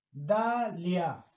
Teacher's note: Se pronuncian las dos vocales en la misma sílaba, por lo tanto es diptongo.